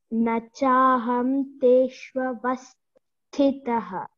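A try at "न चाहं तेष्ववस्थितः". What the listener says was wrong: Very good. Very good.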